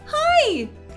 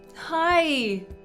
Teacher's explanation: Still excited, still delighted, still showing some love, lower pitch, longer syllable, clasping my heart, a different gesture. · pitching my voice up when I say the word hi, by shortening that syllable, keeping it short